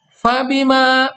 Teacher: dibaca panjang 2 harokat, hukum bacanya adalah mad tabi'i